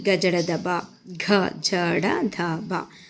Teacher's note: నాలుగవది నాదములు. స్వరపేటికలో నారతంత్రులు కంపింపజేస్తూ నిర్గమించే ఊపిరి.